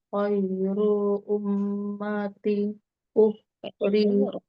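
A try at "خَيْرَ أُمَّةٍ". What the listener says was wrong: khairu bukan khairu, ro-nya pendek.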